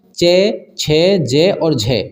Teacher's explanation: ये स्पर्श भी कर रहे हैं, जीवा से स्पर्श भी कर रहे हैं तथा इन्हें बोलने में संघर्ष भी लग रहा है, तो ये हो जाएंगे हमारा चे छे जे और झे। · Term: स्पर्श संघर्षी व्यंजन